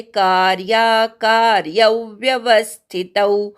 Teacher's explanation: दुसऱ्या का नंतरच्या य वर आघात घ्यायचा.